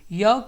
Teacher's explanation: य वर्ड का उच्चारण तालु से होता है।